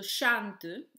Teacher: Then the syllable tu, so chante, in this word chan is the stressed syllable, tu is unstressed